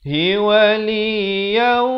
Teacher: di sini idgham bi gunnah masuk beserta dengung dua harakat.